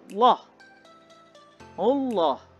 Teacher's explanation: lam tafkhim lam yang dibaca tebal